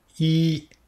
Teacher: Le premier ton doit être fait bien haut et bien stable